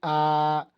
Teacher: ऐसी ध्वनि होती है जिसमें जिह्वा को मुंह में जितना संभव हो सके उतनी नीचे और तालु से दूर रखा जाता है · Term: विवृत स्वर